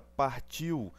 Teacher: No caso da palavra partiu, eu tenho este U fazendo o som de W, ou seja, é uma semivogal.